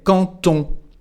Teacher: the letter D in this case becomes a T. So instead of quand on, we say quand on with a T. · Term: liaison